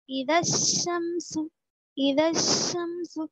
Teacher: الف اور لام دونوں کو بھی چھوڑ دیتے حروف شمسی کے قاعدے میں · اذا الشمس تھا، لیکن چونکہ شین جو ہے حروف شمسی میں سے ہے، حروف شمسی سے پہلے اگر الف لام آئے گا تو وہاں پر ہم الف اور لام کو نہیں پڑھیں گے بلکہ بعد والے حرف سے ملا کر پڑھیں گے